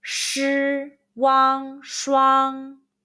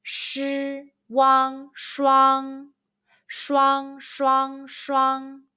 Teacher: Chuang is window in Chinese. Let's combine the initial sh, the final wang, and the high-pitched first tone all together